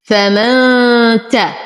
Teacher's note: نون ساكنه وبعدها التا فالحكم اخفاء مع غنه كامله